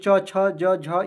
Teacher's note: च वर्ग का उच्चारण स्थान क्या होता है? तो तालु होता है।